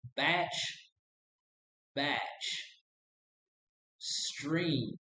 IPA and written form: bætʃ (Batch)